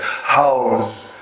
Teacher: But most of the long syllables, the metrically long syllables, also have this inherent vowel length. House, the ow sound is a very long sound.